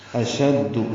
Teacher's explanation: حمزہ کو جلدی سے پڑھیں گے، شین کو دال سے ملائیں گے، دال معروف طریقے سے ادا کریں گے.